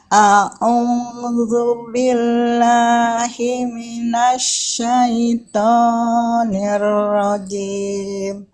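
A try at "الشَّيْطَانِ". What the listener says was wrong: Syaitonnya jangan panjang-panjang, biasa aja. A'udzu billahi minasyaitonir rajim. Syaitoni.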